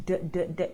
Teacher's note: So T and D are pronounced the same way, and D is voice. D, d, d. You should feel a bit of a vibration when you're saying that sound. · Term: D sound